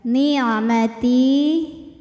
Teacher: huruf ta ini kita panjangkan cukup 2 harokat saja. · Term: mad tabi'i dhahiri